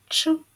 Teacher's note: перший звук ч він який приголосний твердий